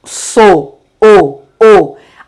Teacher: Olha o timbre do O, fechado. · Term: timbre fechado